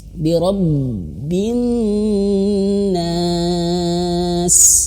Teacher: ketika ba bertasydid itu harus ditekan. Semua huruf pokoknya harus ditekan kalau ada tasydid, kecuali nun dan mim.